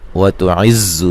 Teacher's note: زا کو زور سے، سختی سے اور سیٹی سے ادا کریں گے،